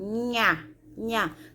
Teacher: quando eu digo nha, eu não ouço o som do N e do H. É um som só, que é o nha, nha.